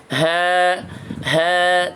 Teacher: huruf h diucapkan dengan cara menyempitkan pita suara saat sukun dan membukanya saat berharokat sambil menghembuskan udara tanpa menggetarkannya